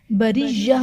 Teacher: बरिय्या में रा के नीचे जेर है तो रा को बारीक पढ़ेंगे